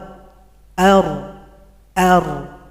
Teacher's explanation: takrir artinya suara yang bergetar itu terjadi pada huruf ro itu hanya satu kali getaran saja enggak boleh lebih